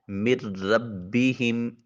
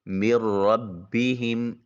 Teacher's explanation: میم کو براہ راست را سے ملائیں گے اور نون کی آواز بھی بیچ میں نہیں آئے گی، اس لیے اس کو ادغام بلا غنہ کہا جائے گا۔